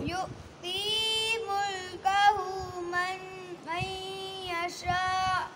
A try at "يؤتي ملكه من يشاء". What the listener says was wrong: नहीं मद नहीं की. यशाअ